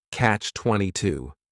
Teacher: The word catch is just 1 syllable, and then 22 is 3 syllables, and the stress is on that final syllable